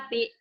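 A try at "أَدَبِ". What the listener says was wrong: bukan ida, ada ya. Adabi, dia nggak dengar. Bukan idabi, adabi.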